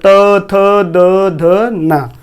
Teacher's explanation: यानी दांत से हमारी जीभ जो है दांत पर स्पर्श होती है।